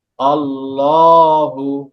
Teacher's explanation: আল্লাহ শব্দের লামের আগে যদি জবর অথবা পেশ থাকে, আল্লাহ শব্দ লামকে মোটা করে পড়তে হবে। আর যদি জের থাকে তাহলে চিকন করে পড়তে হবে।